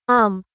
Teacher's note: মিম উচ্চারিত হয় ঠোঁটের বাইরের বা শুষ্ক অংশ থেকে।